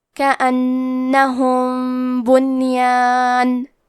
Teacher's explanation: آخری میں میم ساکن ہے، پھر حرف الباء آتا ہے، کلمت بنیان با حروف الاخفاء الشفوی میں سے ہے، تو ہم یہ حکم کو غنہ کے ساتھ ادا کریں گے